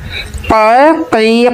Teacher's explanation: زبان کی جڑ جب کوے کے قریب سے نرم تالو سے لگے تو اس سے قاف ادا ہوتا ہے